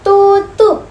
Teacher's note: apabila fonem P berada pada akhir suku kata ataupun kata, maka fonem P diucapkan secara tidak lepas